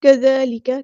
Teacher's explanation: ذال کو باریک پڑھنا ہے، نرمی سے ادا کرنا ہے، سختی نہیں لے کر آنی